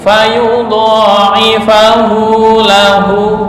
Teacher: Hu yang pertama 1 alif, yang kedua 2,5 alif.